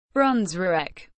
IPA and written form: ˈbrɔˑnsviːk (Brunswiek)